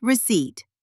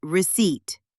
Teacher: The P is silent.